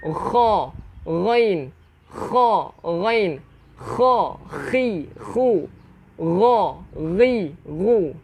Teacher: untuk huruf kha dan ghain kita kena menggetarkan kerongkong kita. Kerongkong kita kena getarkan.